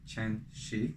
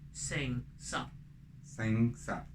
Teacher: in Mandarin the first word will be ch word, but in Cantonese will be sh word, like a snake, like shh.